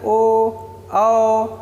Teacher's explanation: इसके बाद होता है कि ओ दवतो ह कंठोष्ठम यानी कंठ तथा ओष्ठ मिला करके ओ और औ का उच्चारण होता है। जैसे हम लोग बोलते हैं ओ औ, तो यहाँ पे कंठ से भी निकल रहा है, ओष्ठ का भी इस्तेमाल होता है। · जैसे हम लोग बोलते हैं ओ औ, तो यहाँ पे कंठ से भी निकल रहा है, ओष्ठ का भी इस्तेमाल होता है। ऊपर वाला ओष्ठ और नीचे वाला ओष्ठ दोनों जो है साइड से दोनों ऐसे चिपकते हैं, तब ओ और औ का उच्चारण होता है।